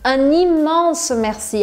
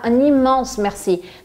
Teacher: os franceses vão fazer essa ênfase na palavra immense mesmo